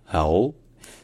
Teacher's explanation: Donc en fait, ça commence par un A, mais qui est suivi d'un Ain. Donc le fameux Ain, ce son un peu guttural, mais en même temps un petit peu mou, suivi d'un O qui est long, donc A'u. Et enfin, le DH, en fait, c'est un son the, comme l'anglais the, ou this, or that.